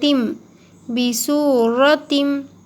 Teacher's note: تا کے نیچے دو زیر ہے اور یہاں پر تشدید ہے تو تا کو ملائیں گے میم میں